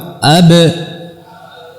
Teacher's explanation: antara dua bibir merapatkan dengan kuat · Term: huruf ba